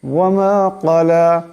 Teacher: এখানে বড় কাফ, এটাকেও মোটা করে পড়তে হবে।